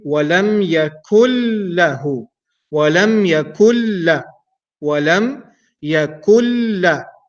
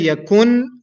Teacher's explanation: So the noon sound will be gone completely. The noon letter will be merged into lam, and the lam will carry an automatic shadda. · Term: idgham without ghunna